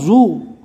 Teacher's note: اس میں تھوڑی سی سیٹی جیسی آواز آئے گی زا کی طرح، لیکن اس کو پور پڑھنا ہے